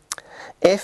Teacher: f is a voiceless labio Dental fricative